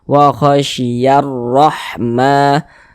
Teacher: Makanya alif lam setelahnya huruf ra, karena huruf ra huruf syamsiyah, maka hukumnya alif lam syamsiyah. Maka huruf lamnya di sini tidak ada tanda bacanya, ini langsung masuk ke huruf ra.